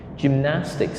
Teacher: So we stress on the second syllable, gymnastic.